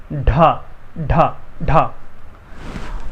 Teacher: और जब इसी में हम थोड़ा सा प्रोनाउंस करने में हा का उच्चारण जो है मिला देते हैं तो जगह वही है, जीभ को ही वहीं रखना है, बस थोड़ा सा हा का जो उच्चारण है उसको मिला देना है